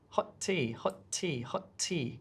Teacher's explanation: we could have hot and tea, but we don't want to say two T sounds. We want to make it into one. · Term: combination rule